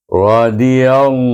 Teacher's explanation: baca dengan tebal lam jalalah itu dan dibaca dua harakat hu